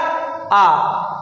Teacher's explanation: विवृत स्वर जिनके उच्चारण में सबसे अधिक मुख खुलेगा